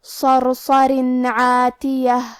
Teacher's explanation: عین حروف الاظہار میں سے ہے اور اظہار کا معنی ہے ظاہر کرنا اور تنوین کی اصلیت نون ساکن ہے تو ہم یہاں تنوین ظاہر کریں گے اور اسے نون ساکن پڑھیں گے اور بغیر غنہ سے یہ حکم کو ادا کریں گے